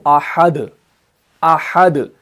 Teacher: بن جاتا ہے، اس کو ہم سکون عارضی دے دیتے ہیں، تو وہاں پر قلقلہ ہوگا لیکن سٹرونگ والا قلقلہ ہوگا، کمزور والا قلقلہ نہیں ہوگا